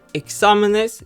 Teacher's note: Exámenes should have an accent mark since it ends with S, meaning again that the second to last syllable should be stressed. However, this time the third to last syllable is stressed, so the A gets an accent mark.